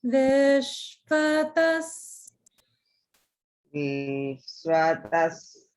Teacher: Only thing is the vi in Vishvatas should be down, not middle.